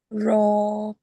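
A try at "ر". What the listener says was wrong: র উচ্চারণটা আপু হচ্ছে না, জিহ্বাটা উল্টিয়ে ফেলুন। র।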